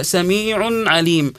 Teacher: عندنا هنا تنوين بعده حرف العين ومعروف انه حرف العين من حروف ايش الاظهار الاظهار الحلق · كلمه عليم اذا وقفنا عليها ايش الحكم اللي فيها مد عارض للسكون يمد بمقدار حركتين او اربع او ست حركات